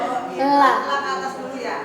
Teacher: Huruf lam itu punggung ujung lidah menyentuh gusi